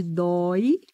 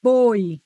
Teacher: Dói tem vogal aberta, ó. Boi tem vogal fechada.